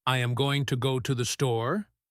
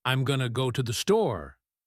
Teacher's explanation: The to and the almost disappear. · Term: connected speech